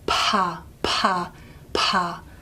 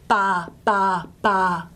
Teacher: technically, what we write as voiceless stops in English are what we call aspirated, meaning we put this little H afterwards, meaning that there's a big puff of air, pa, pa, pa, okay?